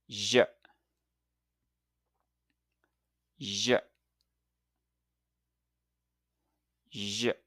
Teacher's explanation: the j sound is made similarly to the sh, but with a little voice added. It's like a buzzing or humming sound. Put your tongue near the roof of your mouth, just like the sh, but this time add your voice to create a soft buzzing sound like j.